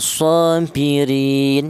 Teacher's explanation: ri ini ada huruf ro yang berharokat kasrah, ini dibaca tarkik atau dibaca tipis.